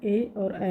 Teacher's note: ऐसे स्वर जिनको उच्चारण करते समय कंठ और तालु दोनों से स्वर निकलता है